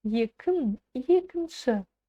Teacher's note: Кончиком языка упираемся в нижние зубки и на полуулыбке произносим нечто среднее и короткое между буквами «ы» и «и». И у нас получается звук «ы».